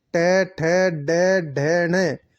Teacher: इन वर्णों का उच्चारण स्थान मूर्धा होता है। ये मूर्धन्य वर्ण कहलाते हैं।